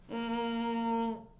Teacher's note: all of the air is coming out of your nose